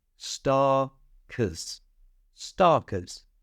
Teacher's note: the ER at the end is pronounced with a schwa sound. That's that little sound.